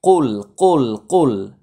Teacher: কফ জিব্বার গোড়া, কখনো হলকের মাঝখানে যাবে না বা হলকেই যাবে না।